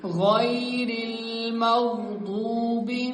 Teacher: غین اور ضاد کو پر پڑھیں گے